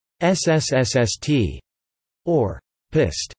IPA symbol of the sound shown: s